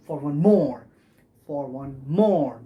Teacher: So the unstressed, unstressed, stress, for one more, that is how it is pronounced. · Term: anapaestic